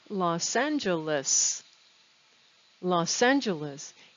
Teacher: notice how the s on loss connects to the a in angeles